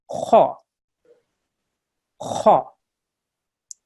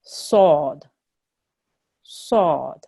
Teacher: when we say these letters, we need to round in our mouth a little bit, and we need to make our voice thick and a little bit heavier. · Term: thick letters